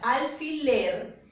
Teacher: la mayor fuerza de voz de la palabra alfiler va en la última sílaba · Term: agudas